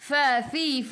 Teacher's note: gigi atas menyentuh perut bibir bawah